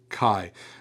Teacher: It's going to give you that German CH as in Bach. So you get that little guttural sound at the back.